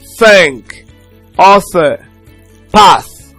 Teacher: a voiceless dental fricative consonant sound. So for instance, it is dental because we bring the tip of the tongue to touch the front teeth.